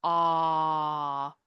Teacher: a is the lowest and furthest back our tongue goes